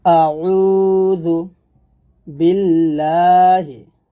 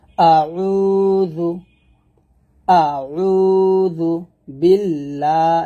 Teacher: আউযু বিল্লাহি, হামজা জবর আ, আইন ওয়া পেশ উ, দাল পেশ দু। আউযু, এখানে হামজা জবর আ টান দিবেন না, উ তে এক লিফ টান দিবেন